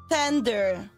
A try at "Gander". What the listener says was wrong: G-A-N-D-R, not Tender! Gander! G as in good.